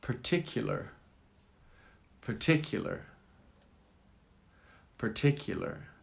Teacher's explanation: Accent on the second syllable.